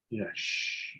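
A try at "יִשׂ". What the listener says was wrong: No, sin, S, not S-H.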